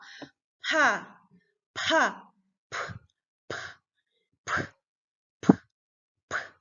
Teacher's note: Aquí, pa, es un sonido simple, pa, pa, aspirado, pa, expulsando aire